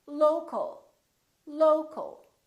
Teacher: For example, we stress the first syllable here, low, low, but we don't say local or locale. We reduce the second syllable and it becomes the a, local, local. So you see OL and AL sound exactly the same because they're both reduced syllables.